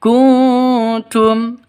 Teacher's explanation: Kuntum nun mati bertemu dengan tak, samar didengungkan, siap-siap ke huruf taknya karena ikhfa hakiki.